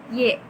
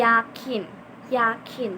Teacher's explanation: si bagian depan lidah itu tuh mendekat ke langit-langit. Y seperti itu. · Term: fonem Y